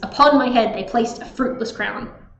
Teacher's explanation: All of these are da-dun, da-dun, da-dun, da-dun, da-dun. 10 syllables, da-dun, da-dun, that unstressed, stressed pattern. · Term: iambic pentameter